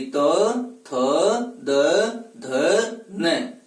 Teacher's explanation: हम उच्चारण करेंगे तो जिह्वा ऊपर वाले दांतों को स्पर्श करेगी। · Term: त वर्ग